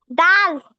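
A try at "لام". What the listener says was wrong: ডাল কেন? ডাল কিরকম লম্বা হয়? আপনি লামটাও চিনেন না?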